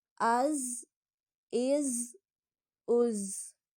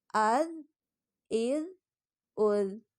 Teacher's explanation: زا اور ذال کو پڑھتے ہوئے فرق واضح کریں، کیونکہ زا سختی سے پڑھا جاتا ہے اور ذال نرمی سے پڑھا جاتا ہے